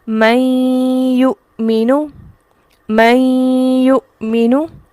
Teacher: یا کا ملانا، ادغام ہونا نون کا یا کے ساتھ، اور اس میں جو ہم رک رہے ہیں یہ رکنا غنہ ہے۔ ٹھیک ہے، آواز ناک میں جاتی ہے، اس رکنے کو کہتے ہیں ادغام مع الغنہ۔